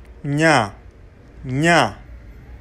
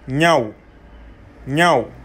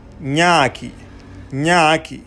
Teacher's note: La beauté, nya, nya, nasal, palatal, prononcé comme le GN en français dans agneau ou pagne